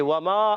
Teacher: واو کے ادائیگی ہونٹوں کی گولائی سے، وما علی مدہ ایک الف کھینچ کے ادا کریں گے۔